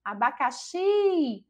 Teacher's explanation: a gente já percebe que a sílaba tônica é a sílaba xi, que em relação à localização é a última sílaba e é classificada então como oxítona.